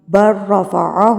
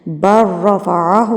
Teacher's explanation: اس با کو آپ نے را سے ملانا ہے، لام جو ہے وہ سائلنٹ ہے، آپ نے با کو ڈائریکٹ جا کے را سے ملانا ہے